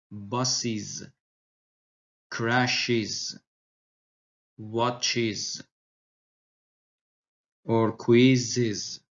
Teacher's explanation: the plural ending -es is pronounced /ɪz/ like buses